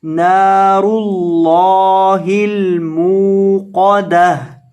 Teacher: मूक़दा, ता पेश तू, मूक़दतु, पीछे से मिलाकर पढ़ें, नारुल्लाहिल मूक़दतु, वक़फ़ करेंगे तो गोलता को साकिन हा से बदल देंगे